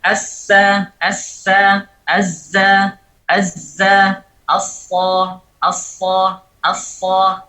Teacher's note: Bunyi desis tiga huruf ini sama persis, tidak ada perbedaan, Dan posisi bibir juga sama, tidak ada perbedaan, hanya saja perbedaan terjadi pada pangkal lidah. · huruf ini keluar dari muntaha tarafil lisan, dari ujung dari lidah, ujung dari ujungnya lidah. Ma'a asfalis safhatid dakhiliyah, bersamaan dengan permukaan bawah dari permukaan bawah yang bagian dalam bagi gigi bawah, gigi depan tapi yang bawah.